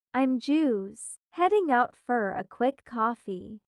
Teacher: You hear how just loses the T sound and for becomes fur.